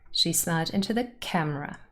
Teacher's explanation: camera is the last lexical item so it carries the main stress and like I said before camera has two syllables camra and